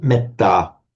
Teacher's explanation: So um on its own you may the a me would would be long but the e here becomes short because it's followed by a double consonant